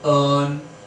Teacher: So it is quite a prolonged one, a central vowel, prolonged sound, stressed sound, spoken as so always it is like that sound will be there, and r is included with this, but that r is not generally pronounced as per British RP, right? Otherwise in American that r is pronounced, but here in British RP we don't pronounce that r sound.